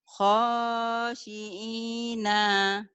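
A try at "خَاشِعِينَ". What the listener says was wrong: Nanya pendek bu. Khosyi'ina.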